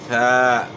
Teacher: میثاقکم یہاں یا مدہ ہے، اس کے بعد الف مدہ ہے، الف سے پہلے زبر ہے، تو یہاں بھی ثا کی زبر کو آپ نے ایک الف کی مقدار کے برابر کھینچنا ہے